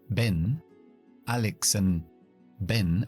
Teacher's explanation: voy a dejar esa D en una parada glotal que se llama freno la voz ven alexan ven una mini pausa freno la voz y continuó